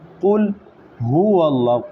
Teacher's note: قلقلہ کر دیا. قلقلہ نہیں کرنا، قاف لام پیش. قل پوری ادائیگی ہوگی